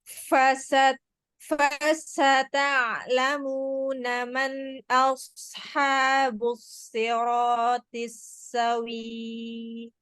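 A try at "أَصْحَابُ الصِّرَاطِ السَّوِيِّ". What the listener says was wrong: Nggak panjang. SAWIYY. Jangan dipanjangin. Bukan WII. Ya, WIYY. Tapi Y-nya 2 kali.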